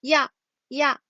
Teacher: 야는 뭐랑 합친 거냐면 이랑 아랑 합쳐진 거예요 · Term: 이중모음